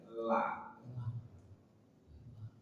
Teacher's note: Dari 2 ujung sisi lidah hingga ke akhir ujungnya bertemu dengan gusi atas di hadapannya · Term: lam